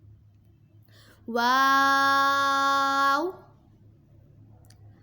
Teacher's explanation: واو دونوں ہونٹوں کے گولائی سے ادا ہوگا۔